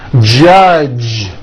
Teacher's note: the mistake that many foreign speakers make is that they unvoice the J sound at the end of a word. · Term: voiced J sound